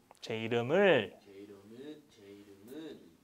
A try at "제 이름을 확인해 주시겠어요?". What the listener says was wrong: That's right. But should be a question.